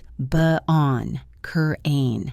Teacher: Instead of saying the t, we stop the air in our throat. Bon cane. It is like a little hiccup in the middle of the word. · This is very common in British English, but Americans use it too in words like button or curtain. Instead of saying the T, we stop the air in our throat. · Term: glottle stop, glottal stop